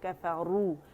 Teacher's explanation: کفارو واو مدہ ہے 2 کاؤنٹ کے، کفارو اور را موٹا ہوگا.